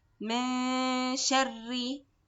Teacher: Sheen is light, so the ghunna wants to be light also.